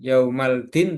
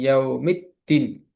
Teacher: alif lam syamsiyah dibaca lebur · Jadi bukan yaumaldin tapi yaumiddin. Jadi alif lamnya lebur atau tidak terbaca. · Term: alif lam samsiah